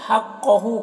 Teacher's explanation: قاف کو پر پڑھیں گے، یہ حروف مستعلیہ میں سے ہے، ہو میں الٹا پیش ہے، یہ واو مدہ کی طرح ہوتا ہے۔